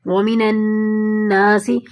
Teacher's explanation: نون کو نون میں ملا رہے ہیں، ایک تو ڈبل نون آ گئے، ٹھیک ہے، اور اوپر سے شد بھی آ گئی، تو یہاں اچھا خاصا گنہ ہوگا۔ اور یہاں پہ کوئی وقف بھی نہیں آ رہی، اگر وقف آ رہی ہو تو ہم تھوڑا کم کر دیتے ہیں۔